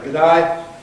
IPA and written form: gəˈdʌɪ (G’dayGood day)